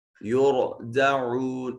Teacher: را ساکن ہے، ما قبل مضموم ہے، را کو مفخم ادا کیا جائے گا